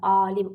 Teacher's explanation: uzanma birdə, vurğu ikidə. Elan uzanma bir də, vurğu ikinci hecədə olur.